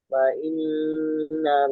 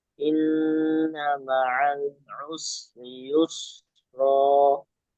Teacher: Itu terus nunnya sedikit ditambah gunah.